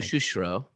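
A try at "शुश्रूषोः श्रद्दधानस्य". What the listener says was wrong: because it's not shu shu shro, because it's much easier to say that way. It's shu shru sho shradadhanyasya.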